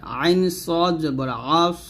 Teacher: আইনকে সদকে হবে মোটা করে